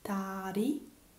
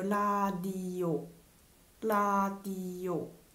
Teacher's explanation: Tigut suona come t all'inizio di parola e d all'interno tra vocali